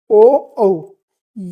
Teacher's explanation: कंठ और ओष्ठ यानी कि होठ को हम वृत्ताकार करके इनको बोलते हैं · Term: कंठोष्ट वर्ण, कंठोष्ठ वर्ण